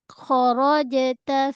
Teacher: Kho dia huruf te tebal dia macam kha kha kharajta. Kemudian pada jim mati ada qalqalah sughra. Jangan baca kharaja.